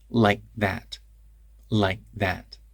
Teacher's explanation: if I speak quickly then the K in like turns into a glottal stop before th